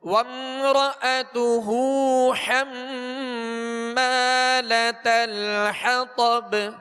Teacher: با پر قلقلہ کریں گے، یعنی آواز میں جنبش ہوگی، آواز لوٹتی ہوئی محسوس ہو